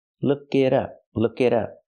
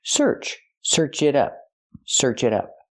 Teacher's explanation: the t is a fast d